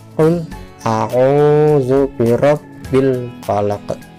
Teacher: Dan di belakang sini ada huruf qaf. Qaf ini termasuk huruf qalqalah, jadi belakangnya harus mantul.